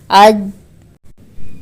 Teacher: یہ یہاں پہ صرف جو ہے صفت شدت ادا ہو رہی ہے، اور حرف آدھا مطلب ہے، ابھی مکمل ادا نہیں ہوا ہے، کیونکہ جب ہم اج کہہ رہے ہیں تو جیم ادا کرتے وقت ہماری جو وسط زبان ہے، یعنی بیچ والا جو حصہ ہے زبان کا، وہ اوپر درمیانے والے تالو سے لگ جاتا ہے